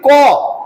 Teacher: ক কে উচ্চারণ করতে হলে ক এর সঙ্গে একটা অ চলে আসে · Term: ব্যঞ্জন ধ্বনি